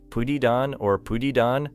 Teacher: It may sound like pudidon or pudidon depending on the speaker and accent. The final sounds connect so closely that a learner may not hear put it and on as separate units.